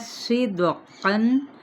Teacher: صاد پور ہے، دال پہ قلقلہ ہے۔ اب یہاں پہ اگر ہم دیکھتے ہیں تنوین زبر کے بعد آگے کیا ہے، واو متحرک ہے تو ادغام مع الغنہ کا قاعدہ، لیکن قاف حروف مصالیہ میں سے پورا ادا کریں گے۔